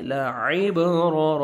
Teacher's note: با قلقلہ کریں گے اور عین کو اپنے صحیح مخرج سے ادا کریں گے. لعبرا، را کو منصبر ہے، را کو موٹا کر کے پڑھیں گے.